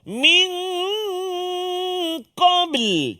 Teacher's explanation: Nun mati bertemu dengan qaf. Apa dia? Juga ikhfa hakiki dengung dengan kadar dua harakat.